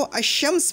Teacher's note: शीन ने लाम को तलफ़्फ़ुज़ में खींच कर अपने जैसा बनाया और फिर उसको अपने अंदर मुदग़म कर लिया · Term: हरूफ शमसी